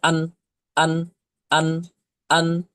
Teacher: জিহবার আগা তার বরাবর উপরে তালুর সাথে লাগিয়ে নুন অক্ষরটিকে উচ্চারণ করতে হয় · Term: নুন অক্ষরের মাখরাজ